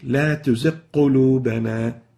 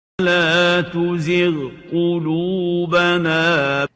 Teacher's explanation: Clear, obvious ghain followed by a qaf, not merged together, not merging the two letters, the ghain and the qaf together.